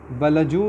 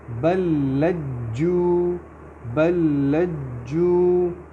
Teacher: لام اور اگلا لام مل جائے گا کیونکہ اس کے اوپر شد ہے